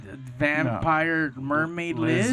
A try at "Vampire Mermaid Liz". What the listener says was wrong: Yes. I mean, don't say it with a question mark after it.